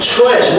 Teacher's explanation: when tr is there, you pronounce it differently. It becomes like ch